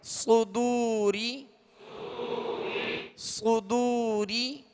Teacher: صدو. را زیر ری، را کے نیچے زیر ہے، را کو باریک پڑھیں گے